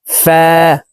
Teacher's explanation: উপরের দাঁত নিচের ঠোটের পেটের সঙ্গে লাগিয়ে ফা হরফের উচ্চারণ করব